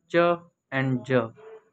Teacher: ये sound produce करते हुए एयर फ्लो कम्प्लीटली स्टॉप है और फिर साउंड जब प्रोड्यूस होती है तो वो नैरो पैसेज से गुजरती है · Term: affricates